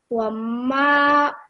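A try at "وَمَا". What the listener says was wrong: Bit more longer. Ma.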